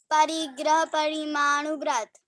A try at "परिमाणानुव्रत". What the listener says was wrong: परिग्रह परमाणुव्रत नहीं, परिमाण अनुव्रत, परिमाणानुव्रत, परिमाण उसमें अनुव्रत जोड़ा तो परिमाणानुव्रत, आप अलग बोल दो, भले ही तुम्हें असुविधा हो रही तो परिग्रह परिमाण अनुव्रत ऐसा भी बोल सकते